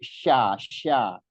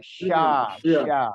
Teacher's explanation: jadi lebih dominan angin ee hamesnya itu namanya nama sifatnya tafasi banyak angin yang menyebar di permukaan lidah